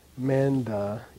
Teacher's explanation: The prenasal is very strong in a 2-syllable word where the first syllable is an open vowel. Open vowel means there's no suffix letter here.